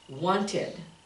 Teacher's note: We don't say want, we say wanted, wanted. You actually add another syllable, wanted, because it ends in a D or a T.